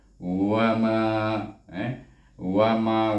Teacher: Oleh kerana ada mat huruf mat di sini, maka kita baca dengan mat asli dua harakat, iaitu wama, wama wa satu, ma dua.